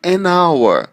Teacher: Esse H, embora seja uma consoante, ele não tem, na hora que a gente pronuncia, o som de consoante. Então, por isso é que a gente vai usar o N, porque ele tem o som de vogal.